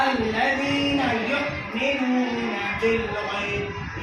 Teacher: حمزہ ساکنہ کے پڑھنے کیا ہوتا ہے، جھٹکا، الذین یؤمنون بالغیب، یؤمنون کی نون کے ساتھ واو حرف مد، اس کو کھینچیں گے · تو حمزہ ساکنہ کے پڑھنے میں جھٹکا ہوتا ہے ، حمزہ ساکنہ کے پڑھنے کیا ہوتا ہے، جھٹکا، الذین یؤمنون